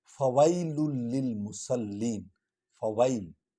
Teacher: فویل للمصلین، فویل، فا پر زبر ہے، وا اور یا کو اکٹھے پڑھیں گے کیونکہ یا پر جزم ہے۔